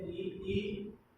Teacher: तालु से बोले जाने वाले हैं ई